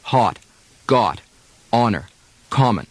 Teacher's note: Some standard American speakers do short O as if it were ah, hot, got, honor, common. Midwestern and Western speakers sometimes round it a bit.